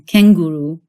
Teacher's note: It's an N made with your tongue raised up in the back of your throat.